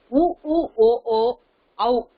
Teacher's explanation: வாய் திறக்கும் முயற்சியுடன் இதழ்களை குவிப்பதால் பிறக்கின்றது